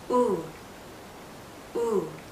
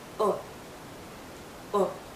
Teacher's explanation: the circle that we make with our lips is tight tense